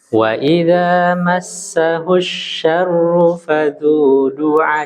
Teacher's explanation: Di sini ada kekeliruan di kalimat syarru. Di sini nggak boleh panjang.